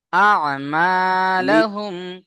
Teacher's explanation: কণ্ঠনালীর মাঝখান থেকে আইন উচ্চারণ হবে।